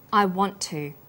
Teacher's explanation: the final t sound in want is held slightly longer on the tongue then tu is pronounced t sound is pronounced only once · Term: consonant plus same consonant linking